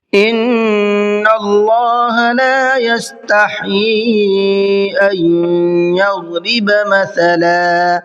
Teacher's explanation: ان کے نون میں غنہ کریں گے، اس لیے کہ نون کے اوپر تشدید ہے۔ اللہ کے لام کو منہ بھر کے پڑھیں گے، کیونکہ اللہ کے لام سے پہلے نون کے اوپر زبر ہے۔